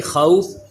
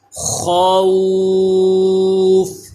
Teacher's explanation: Next دیکھیے خوفین میں یہ واو ساکن سے پہلے زبر ہے تو واو لین. واو لین کے بعد جب ہم اس پہ وقف کریں گے خوف تو فا بھی ساکن ہو جائے گا. اس پہ جو عارضی سکون آ جائے گا حروف لین کے بعد تو اس کی وجہ سے اس پہ مد آ جائے گی، اسے کہتے ہیں مد لین عارض.